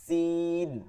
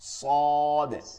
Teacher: সদ হচ্ছে সিরসির আওয়াজ হবে কিন্তু মোটা আওয়াজ হবে। সিন হচ্ছে সিরসির আওয়াজ চিকন, সদ হচ্ছে সিরসির আওয়াজ হবে কিন্তু কি হবে, মোটা হবে